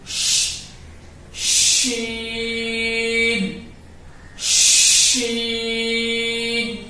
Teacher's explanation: شین کا مخرج زبان کا بیچ کا حصہ اور اس کے مقابل اوپر کا تالو۔ تو زبان ہماری ہے، اس کے جو بیچ کا حصہ ہے اور اوپر کا تالو، یہ جب ملیں گے تو وہاں سے ادا ہوگا شین شین۔